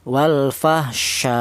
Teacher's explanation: cara bacanya hamzah ini dibaca nabr, yaitu ada pada penekanan suara